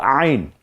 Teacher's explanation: গলায় চাপ দিয়ে উচ্চারণ করতে হয়, গলার মাঝখানে আইন